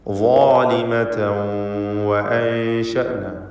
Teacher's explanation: ളാലിമ എന്നതിൽ ളാനും അതിൻ്റെ ദീർഘാക്ഷരമായ അലിഫിനും തഫ്ഖീം കൊടുക്കണം. ളാലിമതൻ എന്നതിലെ തൻവീനിന് ശേഷമുള്ള വാവിൽ ലയിപ്പിച്ച് മണിക്കണം.